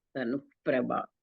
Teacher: after Dhanu, there is a Visarga and Pa is there, which is a Upadhvaniya. So Dhanu Prabha, it will become.